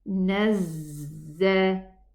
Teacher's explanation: Now this za has a shadda. Nazza, and it has a whistling sound and a running sound, rakhawa. So it has safir, whistle, and rakhawa, softness.